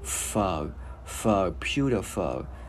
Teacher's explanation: Chữ F mình đưa hơi nhiều ra, mình gắn vào phở, phở, pewderful.